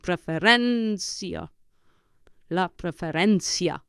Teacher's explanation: you push down on the penultimate syllable, on the syllable before last